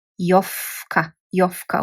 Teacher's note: And if you hear this V when you're pronouncing it, it becomes F.